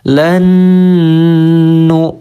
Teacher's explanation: bunyikan Lan sambil ditahan suaranya jangan terlalu lama Cukup dua ketukan atau satu Alif sambil didengungkan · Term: Idgham bi gunnah